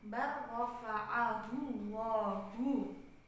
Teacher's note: Jadi lamnya diidghamkan ke huruf ra itu secara sempurna. Makanya di sini ada tasydid.